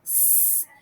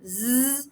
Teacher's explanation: So if you think about the sound s and z, you basically make the same formation. The only difference is the z sound is voice, and you hear your vocal cords make some work. So if you touch your throat here, you can tell the difference there.